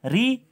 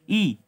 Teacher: री में देखने आपकी जीभ ऊपर छत के आगे वाले भाग को टच कर रही है और ई में पीछे वाले को